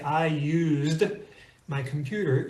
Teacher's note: When you say, I used my computer, you can feel the Z, the vocalization in your throat.